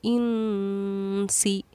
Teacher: نون ساکن کے بعد حروف اخفا میں سے کیونکہ سین آ رہا ہے اسی لیے ہم نے نون ساکن پر اخفا کیا